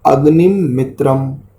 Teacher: दूसरी पंक्ति में अग्निम मित्रम, यहाँ पर अनुस्वार को दो स्थानों पर मकार उच्चारण होगा